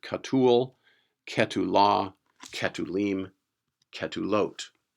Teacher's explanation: the passive participles are characterized by the long you class vowel that shows up in the second syllable of the form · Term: pure long vowel